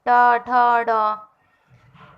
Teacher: ट वर्ग जिनका उच्चारण करते समय आवाज मूर्धः से निकले